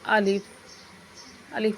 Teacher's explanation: الف منہ کے خالی حصے سے ادا ہوتا ہے